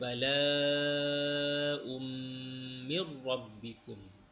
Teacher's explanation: Tanwin bertemu dengan mim pun dimasukkan